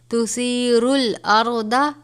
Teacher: سا کو نرمی سے پڑھیں گے را کو پر کر کے پڑھیں گے